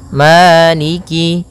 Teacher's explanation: Pada bacaan maliki di lafal ma ada hukum tajwid berupa mad tabi'i, yaitu adanya fathah bertemu dengan alif, panjangnya 2 harokat, maliki. Kemudian kaf di sini ada huruf kasrahnya, maka sempurnakan kafnya, jangan seakan-akan diputus.